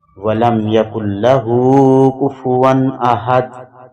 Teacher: کفون تنوین ہے اس کے بعد حروف حلقی میں سے حمزہ زبر احد میں آتا ہے تو اس کا اظہار ہوگا